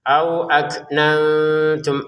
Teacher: untuk kafnya dikeluarkan nafas sedikit